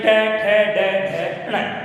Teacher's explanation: जिन वर्णों का उच्चारण करते समय हमारी जीभ दांतों के खुरदरे भाग को टच करती है, छूती है या स्पर्श करती है, तो उसे मूर्धन्य व्यंजन वर्ण, मूर्धन्य वर्ण कहते हैं।